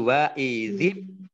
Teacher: karena bertemu dengan huruf berikutnya yang sukun, maka ini digandeng langsung sehingga menjadi wa izib.